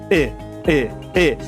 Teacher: O nome técnico dele é vogal semalta anterior, não arredondada. O apelido dele para facilitar para você [música] é i relaxado.